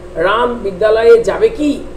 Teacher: তখন দেখা যাচ্ছে তার সুরটা উঠছে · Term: সুর তরঙ্গ